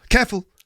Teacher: careful is two syllables but she squeezed it into one syllable